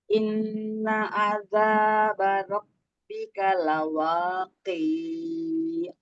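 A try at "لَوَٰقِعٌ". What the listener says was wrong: Pendek. Lawaqi. Pendek.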